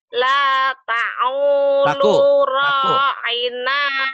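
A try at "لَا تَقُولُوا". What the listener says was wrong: Bukan ta'u, takulu. La takulu. La takulu. La takulu. Taku. Taku. La taku. Ku. La takulu. Qala yakulu, jangan ngomong.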